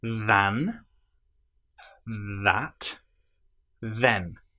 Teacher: In this case, all three of the THs are voiced.